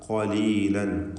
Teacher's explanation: ഖാഫിന് തഫ്ഖീം പൂർണ്ണമാക്കി നൽകണം. ഖലീലൻ ഖ എന്ന അതിൻ്റെ മഖ്റജിൽ നിന്നുമുള്ള സ്വരഭാരത്തോടെയുള്ള തടിപ്പിച്ചുകൊണ്ടുള്ള ശബ്ദമാണ് കൊടുക്കേണ്ടത്.